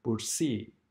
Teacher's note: In combination of these words, when they are combined, the vowels together, like A and E or O and E, only the second vowel is pronounced. For example, in the word bursi, as you see, the word is end by A and E, but in pronunciation, we only pronounce the E and not the A.